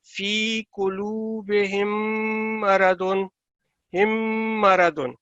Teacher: غنہ مین کہ آپ نے نون کی آواز کو اپنے ناک کے اندر 2 سیکنڈ تک رکھنا ہے